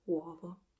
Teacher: I think most of Italy pronounce it uovo with the open o, but I find it charming that in the south of Italy they tend to pronounce it with a closed o.